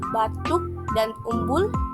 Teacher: bunyinya bunyi belakang tinggi terbuka bulat